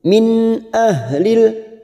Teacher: nun sukun bertemu hamzah, namanya idhar halqi, kita baca jelas tanpa mendengung. Min ahlil, hati-hati huruf ha sukun, harus ada tenaga pada saat membaca ha sukun.